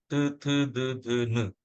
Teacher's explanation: the tip of the tongue touches the inner side of the teeth, it is called as a dent or mata. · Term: dental sounds